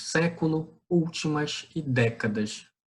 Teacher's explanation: Sílaba tônica Sé, sílaba tônica U, sílaba tônica Dé. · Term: proparoxítonas